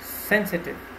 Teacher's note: Sensitive is an adjective, so you have to stress on the first syllable